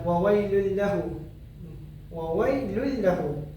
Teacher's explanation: idgham bila gunnah memasukkan tanpa ada dengung. Kita perlu masukkan huruf tu tanpa dengung.